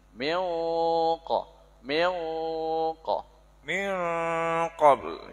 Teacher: qaf dan kaf ini ikhfa'nya dominan, suara yang keluar itu lebih banyak dari hidung.